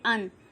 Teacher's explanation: अनुनासिक अंगा, इया, अड़ा, न, म, अनुस्वार यानी कि अन, इन्हें अनुनासिक ध्वनियाँ कहते हैं। इनका उच्चारण स्थान मुंह और नाक दोनों से होता है।